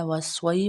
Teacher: وا زبر سواد وس، سواد زبر یا سوئی، وسوئی۔ یا ساکن سے پہلے زبر آ جائے تو یا لین ادا ہوتی ہے، لین کو لمبا نہیں کیا جاتا